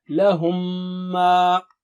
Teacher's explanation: Second thing is, when Mim Sakina is followed by another Mim, then you put Shadda on the second Mim, which is already there. All you have to do is just do the Ghunna. Ghunna means nasal sound, double stretch. So it will be like Lahumma.